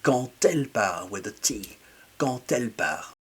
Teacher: when I say quand elle part, I'm actually doing a T sound